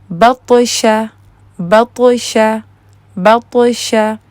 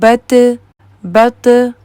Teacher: میں زبان کو پیچھے سے اٹھا رہی ہوں اور میرے زبان کے بیچ میں کرو ہے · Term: ہیوی